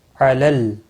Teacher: میم ساکن کے بعد عین آیا ہے، اظہار شفی ہوگا۔ علل لام ساکن کو ہلانا نہیں، عین کے اوپر کھڑی زبر ہے، 1 الف کے برابر کھینچ کر پڑھیں گے